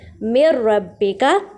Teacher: direct میم کو را سے ملا دیں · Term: ادغام بغیر غنّے